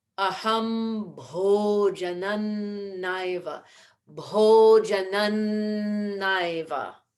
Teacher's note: we bring the dental sound into the end of bhojanam.